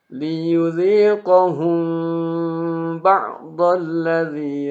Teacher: Dan ini menimbulkan ikhfa syafawi. Jadi tidak jelas apakah dibaca mim atau ba. Jadi makanya agak lama ditahan.